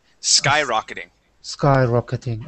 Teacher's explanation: with the accent at the very beginning of the word